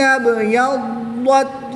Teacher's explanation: یاد رہے ضاد کو پر پڑھنا ہے اور تا کو باریک پڑھنا ہے